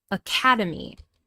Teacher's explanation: >> And we know this because there are four >> vowel sounds. And the second syllable is stressed.